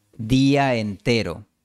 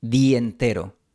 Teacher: La pronunciación que yo recomiendo es día entero, con una transición suave entre la A y la E.